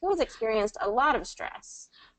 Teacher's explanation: yes, So there's kind of a relatively little stress, a moderate amount of stress, and then we're kind of ending, it's almost like a list intonation. We're ending with a lot of stress, so we want to come down with the intonation even a little bit more.